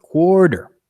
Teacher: The difference is quite huge between how much time I'm giving the first and the second syllable between quarter.